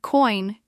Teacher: you get that oi sound, which is a combination of the o sound and the i sound